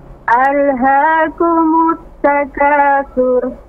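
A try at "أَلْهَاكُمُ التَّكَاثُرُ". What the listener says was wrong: Nah, surnya jangan lepas ya. Tapi dia huruf tebal. Sur. Ra-nya ketika ra disukunkan maka suara memenuhi mulut, tafkhim ya, tebal. Alhaakumut takatsur. Sur ya.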